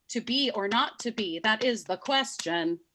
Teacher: that line, first of all, has 11 syllables and has what's called a feminine ending, which means that the 11th syllable is unstressed